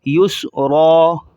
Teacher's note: را پر 2 زبریں آ چکی ہیں اینڈ کے اندر تو وقف کی صورت میں ایک الف کے بقدر را کو کھینچا جائے گا